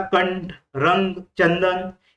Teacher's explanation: इथे अ चा उच्चार अन सारखा किंवा अनुनासिक असतो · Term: अनुस्वार